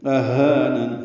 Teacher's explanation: حمزہ اقصی حلق سے ہا اقصی حلق سے ادا کریں گے